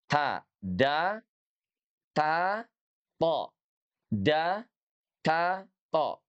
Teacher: Ujung lidah kita bersentuhan dengan gusi gigi seri.